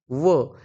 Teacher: व या वर्णाचा उच्चार करताना कोणत्या अवयवांचा उपयोग होतो त्याच योग्य उत्तर आहे दंतोष्ठ म्हणजे दात व ओठ